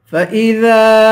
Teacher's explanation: ذال کو ایک الف کی مقدار کھینچ کے پڑھیں گے، الف حروف مدہ ہے